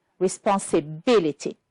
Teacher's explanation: we have only one, which is stressed on the fourth syllable, is responsibility